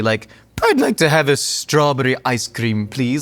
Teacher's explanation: Had that trilled R's, very transatlantic.